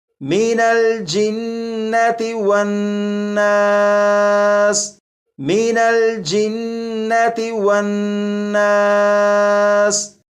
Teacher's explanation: ان دونوں نون مشدد پر غنہ کر کے پڑھیں گے